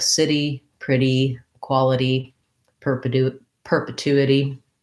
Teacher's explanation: I have to go from the lax I sound to the tense E sound with a little flap in between.